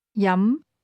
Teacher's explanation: This word has a mid-rising tone.